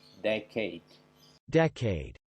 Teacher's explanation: decade, Jadi bukan decade tapi decade dengan penekanan pada suku kata yang pertama